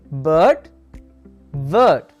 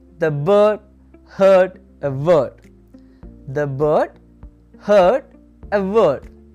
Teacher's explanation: Then we have the sound uh uh as in bird word. It's a long central vowel. Your tongues will be in a relaxed position.